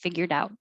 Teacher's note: figured out the d connects and u changes to ya and figured out is a phrasal verb so the out is usually always stressed